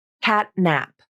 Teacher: Notice how my tongue tip comes up for the unreleased T, then it stays up for the next sound, the N in nap.